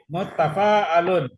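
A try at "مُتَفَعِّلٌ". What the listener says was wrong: Mutafa'ilun. Itu garis harokatnya di bawah tasdid itu. KBPP-nya baru mutafa'alun. Ta'allama kan belajar tadi kan.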